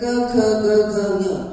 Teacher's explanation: It comes from the throat. It's called kantya, right? They're also called gutturals.